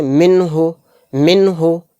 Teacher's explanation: ایک دم پڑھیں گے اس کو ظاہر کر کے، اس نون کو ظاہر کرنا ہے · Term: اظہار